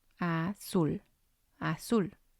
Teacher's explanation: And again, it has 2 syllables. And we're going to stress the last one.